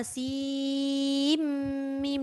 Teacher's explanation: Maknanya sin bertemu dengan mim ni dia seolah-olah dah hilang nun. Dia masuk mim sepenuhnya.